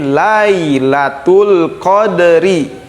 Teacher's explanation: Nah, pada ayat ketiga, Lailatul qadri, laila, bukan lae ya, laila, tapi Lailatul qadri. Ada dal disukun, dipantulkan seperti biasa. Karena hukum tajwidnya qalqalah.